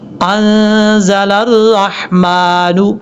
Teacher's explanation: لام کو را سے ملائیں گے، بیچ میں حمزہ ہے لام ہے اس کو چھوڑ دیں گے